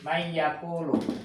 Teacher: Si nunnya tidak dibaca tapi dimasukkan untuk ya. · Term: idgham